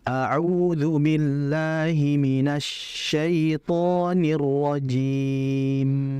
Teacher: Syinnya kurang ditahan karena tadi terlalu cepat sehingga kadar syin ya tafasyinnya enggak dijaga dengan sempurna.